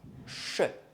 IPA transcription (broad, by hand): ʃ